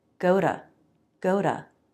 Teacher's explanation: a flap of the tongue and the schwah said very quickly · sometimes the true t at the beginning changes to more of a d sound or a flap t.